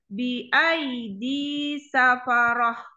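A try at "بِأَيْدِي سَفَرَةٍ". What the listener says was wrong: Ranya tebal. Bi'aidi safaroh. Roh. Roh.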